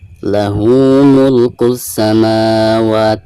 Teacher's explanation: Lahu mulkus samawat, mulkus samawat, alif lam syamsiah ya, karena ada alif lam lalu berhadapan dengan huruf syamsiah di sini huruf sin, maka lam tersebut tidak dizahirkan atau tidak dibaca